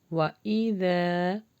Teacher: وَإِذَا، یہاں پہ ذال کے مخرج کو سافٹ لگائیں گے اور الف مدہ لانگ ہوگا